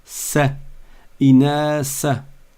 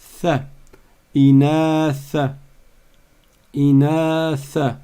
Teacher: Donc tu sors la langue et elle tape sur les dents du haut. Th, comme I think.